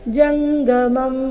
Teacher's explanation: ಇಲ್ಲಿ ಜಂಗ ಅಂತ ಇಲ್ಲ ಜಂಗ ಗ ಇದೆ ಅಲ್ಪಪ್ರಾಣ